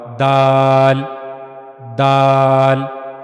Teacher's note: دال اور تا، ان دونوں کو ادا کرنے کی جگہ ایک ہی ہے کہ زبان کی نوک کا اوپر والا حصہ، یہ زبان کی نوک کا اوپر والا حصہ ہے، اور یہ زبان کی نوک کا جو اوپر والا حصہ ہے، یہ اوپر کے سامنے والے 2 دانتوں کے پیچھے کے مسوڑے سے جا کر جب لگے گا تو پھر وہاں سے دال ادا ہوگا